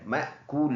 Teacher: रुकेंगे तो ये दोनों ज़ेर साइलेंट मअकूल बन जाएगा